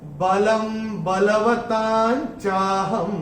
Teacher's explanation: ह के ऊपर जो अनुस्वार आ रहा है चरण की समाप्ति पे आ रहा है। चरण की समाप्ति पे अनुस्वार आने पे उसका उच्चारण केवल और केवल म ही होता है।